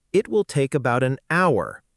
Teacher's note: We say an hour, not a hour, because the H is silent. So, the word actually starts with a vowel sound. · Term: Silent H